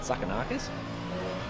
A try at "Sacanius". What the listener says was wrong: Mate, that's pretty close. Nah, You've added a K in there. Sacanius. Sacanius.